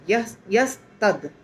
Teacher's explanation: में आता है श्लोक में तो व तद बन जाता है त नहीं रहता है द बन जाता है और हलंत रहता है उसमें